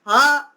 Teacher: ह इसकी भी आवाज कंठ से निकल रही है